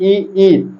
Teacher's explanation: हमारे जीभ का जो मध्य वाला भाग है ऊपर टच होता है यानी हमारे तालो के अंदर स्पर्श होता है इसलिए ये हमारी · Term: तालव्य